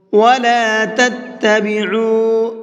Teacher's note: عین کو ہلکا سا کھینچ کر کے پڑھیں گے، واو مدہ کا قاعدہ ہے